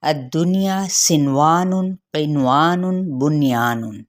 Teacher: ان چاروں الفاظ میں ہم نے نون پہ اخفاء نہیں کرنا، اظہار کر کے ہی پڑھا جائے گا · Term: اظہار مطلق